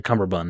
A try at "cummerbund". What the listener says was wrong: There's no B. It's cummerbund.